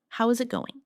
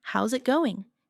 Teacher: the final G in going often softens. This is called connected speech.